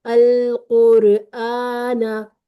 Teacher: हरफल मद से पहले हमजा आ जाए, बस फिर इसको अपने टू काउंट लंबा कर देना है। देखें, अल कुरआना, अब ये हरफल मद है, उससे पहले हमजा। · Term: मद बदल